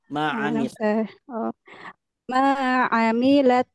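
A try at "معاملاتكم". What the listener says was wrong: jangan ada suara Hnya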